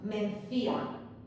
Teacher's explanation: Mencía tiene la fuerza de voz en la vocal débil